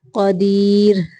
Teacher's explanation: را کو ساکن پڑھتے ہوئے باریک پڑھیں گے